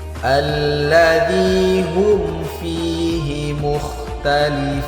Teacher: mim yang berharokat sukun berjumpa dengan huruf fa, maka hukumnya izhar syafawi, tidak boleh didengungkan, cukup dibaca jelas